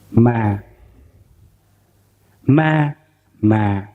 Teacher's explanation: It's very flat, ma. And the second tone is A2, huyền. It's down.